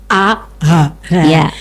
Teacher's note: di bagian bawah maka disebut pangkal pangkal tenggorokan yaitu keluarnya huruf hamzah dengan Ha